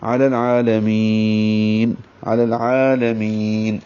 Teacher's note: عین پر کھڑا زبر ہے 2 حرکات لمبا کریں گے اور دوسرا لام جو ہے وہ باریک ہے. می یا مدہ ہے یا مدہ کو یہاں پہ مد عارض سکون یا مد وقفی بنائیں گے کیونکہ آگے نون ساکن کر دیا ہم نے وقف کیا اس لیے مد وقفی.